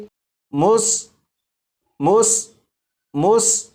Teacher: سین کو سیٹی کی آواز کے ساتھ پڑھیں گے